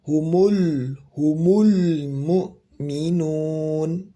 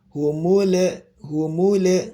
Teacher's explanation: huruf lam di sini Bapak dan Ibu jangan sampai tebal ataupun mantul ya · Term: tipis dan tidak pantul